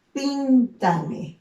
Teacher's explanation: En el caso de píntame, ¿dónde está el mayor énfasis? Está en la primera sílaba, pin, ¿no? Entonces, si yo cuento de atrás hacia adelante, es la ubicación de las agudas, de las graves esta sería una esdrújula.